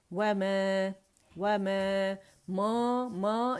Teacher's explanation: नाक में आवाज़ नहीं जानी चाहिए